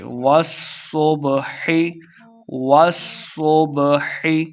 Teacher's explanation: واو کو سواد کے ساتھ ملا کے پڑھنا ہے کیونکہ سواد مشدد ہے اور سواد کو موٹا پڑھیں گے